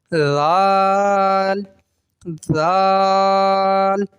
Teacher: زبان کا سرا اوپر والے دانتوں کے اندرونی کنارے پہ جب لگتا ہے تو یہ ذال ادا ہوتا ہے. ٹھیک ہے, بغیر سیٹی کے ادا ہوتا ہے.